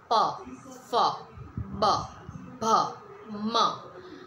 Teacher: પમાં તમારા જે ટીથ જે લિપ્સ છે એ એકબીજા જોડે અટેચ થાય છે, મતલબ ભેગા થાય છે